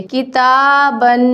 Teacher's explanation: با دو زبر بن، کتابن. یہاں تنوین کا جو الف ہے وہ نہیں پڑھیں گے، صرف تنوین کے اوپر غنہ کریں گے